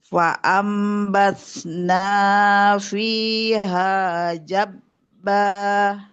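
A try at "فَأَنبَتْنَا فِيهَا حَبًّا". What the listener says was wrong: Nah gak ada titiknya.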